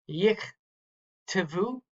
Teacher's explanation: The first shava is going to end that syllable and it's going to be silent. The second shava is the next syllable. It's going to be vocal, and it itself is its own syllable.